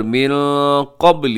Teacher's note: یہاں نون ساکن کے بعد قاف اخفا کیجیے گا